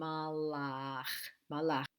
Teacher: there is a stop between the lamid and the ah that stop has a name in linguistics it's called the glottal stop